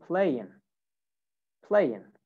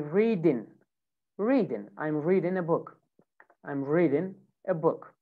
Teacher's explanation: Now, most of the time in American and in British accent, not in British accent, in some British accent, they do this, but in RP, in normal or formal English accent, they pronounce the G. But in American accent, most of the times, they don't say the G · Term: ING pronunciation